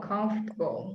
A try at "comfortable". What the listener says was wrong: Comforter. Get a stronger R sound in there.